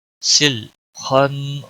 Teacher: خا کو موٹا پڑھیں گے کیونکہ حروف مستعلیہ میں سے ہے، نون پر گناہ ہوگا، اور اس کے بعد مد حروف مد کا الف مدہ آیا ہوا ہے، گویا کہ ایک الف کے برابر اس کو کھینچنا ہوگا۔